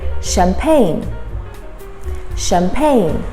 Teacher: so the first CH is pronounced as a sh.